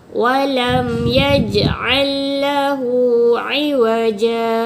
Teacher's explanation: Walam, mim mati jumpa ya, tak perlu dengung. Jangan baca walam, jadi terenung kan? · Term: izhar syafawi